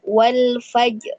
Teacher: Jadi mulut mengucapkan huruf ro tebal, namun dia tidak terlalu tampak gitu ya pengucapan huruf ro-nya.